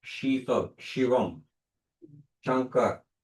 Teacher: આ સસલાનો સ નથી, શીતલ છે. જો જેવું શીતલ તમે બોલશો એટલે આ જીભ છે ઉપર દાંતની પાછળના ભાગમાં અડે છે.